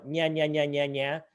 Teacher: For soft sounds in Russian, the middle of the tongue touches, and this is very unusual for American speakers of English, The middle of the tongue touches the roof of the mouth where the hard palate borders the soft palate.